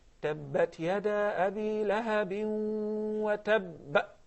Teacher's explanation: The qalqala is very obvious and it's very strong. It is actually the strongest application of qalqala due to the fact that the last letter is a ba, and this is a qalqala letter. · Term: al-qalqala al-kubra